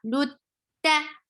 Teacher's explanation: Ta is short, and it is a very strong sound because this is among shidda letters. Ta is among shidda letters.